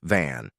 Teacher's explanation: Upper teeth on inner lower lip, but add voice. The lip should buzz against your teeth. Touch your throat to confirm.